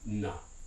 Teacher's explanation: in european spanish this tends to be the alveolar or excuse me the coronal nasal